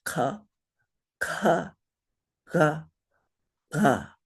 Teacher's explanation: the guttural sounds are all the way in the back of your throat so you kind of close up your throat and you say